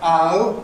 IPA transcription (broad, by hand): ʌʊ